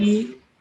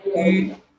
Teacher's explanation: We pronounce them the same place. We use the same height to pronounce them, but something is different. The difference is the shape of the lips.